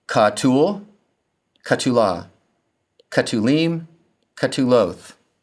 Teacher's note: the single diagnostic feature of the kal passive participle is the Shurik stem vowel in every form. It may also be written defectively as kibbutz.